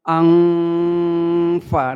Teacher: Sehingga saat kita mendengungkan, menahan bacaan nun, itu posisi lidah kita itu sudah pada huruf sesudahnya. Artinya saat kita mengucapkan angfa, nah itu posisi lidah kita sudah pada huruf fa. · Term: ikhfa